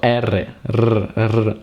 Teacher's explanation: The trilled Italian R is pronounced by vibrating the tip of the tongue just behind the upper teeth. Okay, so to pronounce the R correctly, the tongue should rest on the little ridge behind your teeth and make a vibration.